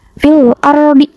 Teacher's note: Harus dibacanya itu alif lam dibaca jelas, fil ardi. Nah, huruf filnya ini dibaca dengan jelas. Terus huruf ro-nya ini dibaca dengan tebal atau takhim.